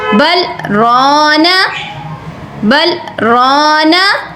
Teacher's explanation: بل کہتے ہوئے آپ نے خاموش ہونا ہے اور اس کے بعد کہنا ہے رونا, بل رونا. ٹھیک ہے, را کو پر کرنا ہے آپ نے. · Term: سکتہ